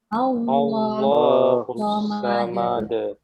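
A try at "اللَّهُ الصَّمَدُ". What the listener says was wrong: Ya, bukan Allahnya jelaskan depannya fathah. Allahu. Allahus samad. Bukan Allah, tidak ada wawunya, tapi lam semua, lam yang tebal.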